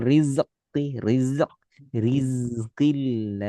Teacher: Mir setengah mengalir tipis dan lembut. Habis itu zai mengalir sempurna tanpa qalqalah